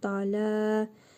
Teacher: Da ləm əlifdir. Bir əlif miqdarı uzadaraq oxuyuruq. Dalə. L hərfində əsrəli tənvin gəlib.